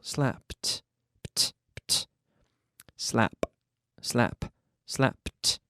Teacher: See that P sound onto the T? No extra syllable.